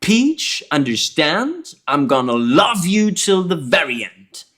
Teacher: the very is stressed more than the end